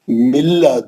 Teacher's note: مر ربی کا نون ساکن کا ادغام بلا غنہ حرف را. مل نون غائب ہو جانا، نون پڑھنا ہی نہیں